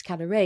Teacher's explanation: the stress is on the last syllable